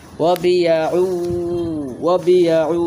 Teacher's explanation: তানবিনটাকে ইদগামে বাগুন্নার হরফের সাথে মিলাইয়া পড়বেন গুন্নার সহিত মিলাইয়া পড়বেন